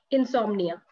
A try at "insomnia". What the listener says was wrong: It's almost correct, just the O. Insomnia.